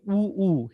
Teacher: उ, ऊ हे औष्ठ्य आहेत. ओठांनी त्यांचा उच्चार होतो.